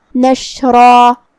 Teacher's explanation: را پہ تنوین زبر ہے تو مد الف بھی تفخیم سے ادا کریں گے مطلب بھاری آواز میں · ہم شین کو زبان اور اوپر کے تالوں کے درمیان سے ادا کریں گے.